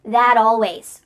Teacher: This isn't always done, but it's often done when native speakers are talking quickly. We link together words by making the final T change into a D. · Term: T changing to a D